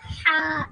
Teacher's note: यानी हलक के दरमियान वाले हिस्से से इसमें जुबान जो है वो कहीं भी नहीं लगेगी। हमारा जो सारा हिस्सा है वो खुला रहेगा हलक का। · اس میں زبان جو ہے وہ کہیں بھی نہیں لگے گی، ہمارا جو سارا حصہ ہے وہ کھلا رہے گا حلق کا۔ آپ دیکھ رہے ہیں یہاں پہ سارا حصہ کھلا ہے، تو یہ ادا ہوگا ہا، یعنی ہمارا جو سانس ہے وہ باہر آئے گا، اپنے سانس کو ہم باہر نکالیں گے، تو اس طریقے سے آسانی سے ہماری ہا ادا ہو جائے گی۔